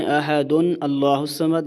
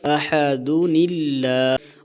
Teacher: اس نون کو زیر دے کر آگے ملا کر پڑھتے ہیں اور حمزہ وصلی کو گرا دیتے ہیں، یعنی اس کو نہیں پڑھتے۔